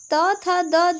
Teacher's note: त थ द जो है वो दंत के अंतर्गत आता है।